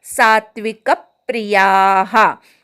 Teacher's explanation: सात्विक मधल्या क वर आघात घ्यायचा, प्री जोडून म्हणायचा